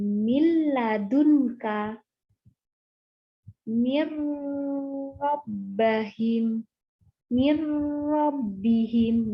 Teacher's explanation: Nah, menurut istilah artinya jika terdapat nun mati atau tanwin bertemu dengan salah satu huruf idgham bilaguna. Nah, huruf nun mati dileburkan tanpa dengung. Nah, huruf idgham bilaguna ada 2, yaitu adalah lam sama ro.